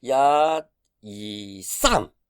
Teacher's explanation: the 三 actually sounds like it was a fourth tone, but it doesn't have to be the fourth tone.